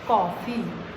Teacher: कॉफ़ी, का के ऊपर ये लगा दीजिए, हो जाएगा कॉफ़ी। ओ का जो उच्चारण था वो अ के रूप में आया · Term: आगत वर्ण